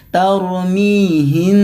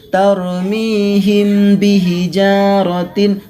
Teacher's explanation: mim sukun disitu ditahan Ya ditahan terlebih dahulu kemudian baru dilemparkan ke hurufba tauro mihin tidak boleh membaca seperti ini Taulany henti hijau jarotin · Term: Ikhfa Syafawi